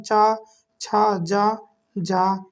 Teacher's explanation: तालव्य व्यंजन यानी जो तालू से बोले जाते हैं किससे बोले जाते हैं तालू से बोले जाते जीभ के ऊपर